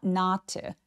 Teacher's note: not 부정어는 매우 중요한 키워드이기 때문에 더 길게 벌려서 not 해 주세요